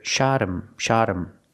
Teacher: the H becomes silent. So the T is phonetically between vowels. So we hear shotum.